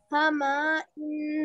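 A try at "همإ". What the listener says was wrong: Not to extend Hama. Hama'in.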